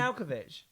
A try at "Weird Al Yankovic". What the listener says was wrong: Weird Al Yankovic. You take out so many syllables. Weird Yankovic.